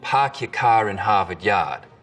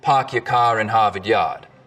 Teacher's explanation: In Boston, it's usually pretty fronted. Park your car in Harvard Yard. In Rhode Island, it's back. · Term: start vowel